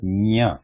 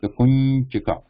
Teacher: This is a nya symbol in Devanagari. So nya is a mixture of the nasal sound in combination with the top surface of tongue touching the soft palate.